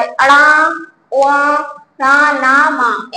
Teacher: यानी इनका उच्चारण जो है नाक के जरिए भी, नाक के द्वारा होता है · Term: नासिक वर्ण